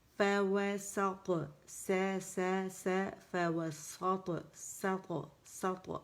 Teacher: اور یہ جو نون ہے نا، اس کو طا کے ساتھ موٹا نہیں کرنا، یا سین جو ہے یہ طا کی وجہ سے موٹا نہیں ہوگا. یوزولی یہ ہوتا ہے جب سینٹر میں کوئی موٹا لیٹر آئے تو فوراً اس کو دیکھتے ہی ہمارے لیٹرز موٹے ہو جاتے ہیں.